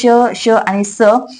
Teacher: श आणि स हे आहेत उष्मे किंवा घर्षक कारण त्यांचा उच्चार करत असताना तोंडातली हवा जोरात बाहेर फेकली जाते जिच घर्षण होतं आणि आणि त्यामुळे श, श आणि स या व्यंजनांचा उच्चार केला